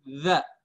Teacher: Ujung lidah keluar ya, za sedikit. Tapi tidak keluar banyak. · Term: zal